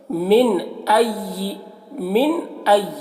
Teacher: नून को जल्दी पढ़ना है, मिन में इख्फ़ा नहीं करना है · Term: इजहार